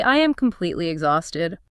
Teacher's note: I shouldn't say exhausted with a high, bouncy pitch. My voice needs to sound heavy. The pitch should drop naturally at the end of the sentence. I need to let the air out of my lungs, maybe sigh slightly.